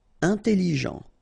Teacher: Important. Final T not pronounced.